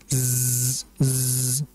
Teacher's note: za ini merupakan huruf yang keluar dari lidah bagian ujung menempel dengan gigi seri bagian bawah. Dan padanya memiliki sifat safir, yaitu sifat yang seperti ada suara siulan yang kuat. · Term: huruf za